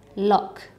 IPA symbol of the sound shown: k